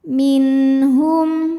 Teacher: nun sukun menghadapi huruf halqi atau huruf tenggorokan yaitu huruf ha. Maka nun sukun kita bunyikan dengan jelas. Minhum, hum. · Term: izhar halqi, idhar halqi